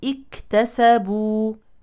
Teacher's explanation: عند البدء بهذه الكلمه تحرك همزه الوصل بالكسر لان ثالث الفعل مفتوح وهو التاء فنقول بدءا اكتسبوا للرجال نصيب